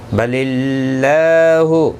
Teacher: اللہ کا لام زیر کی وجہ سے باریک پڑھا جائے گا